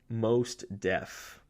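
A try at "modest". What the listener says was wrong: You don't pronounce the T.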